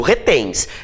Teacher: Então a sílaba tônica é o tens.